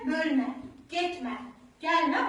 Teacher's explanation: Əgər əmr şəklində deyilirsə, yüksək tonla deyilirsə, bölmə, getmə, gəlmə, onda ilk hecəyə, mütləq burada ilk hecəyə düşür.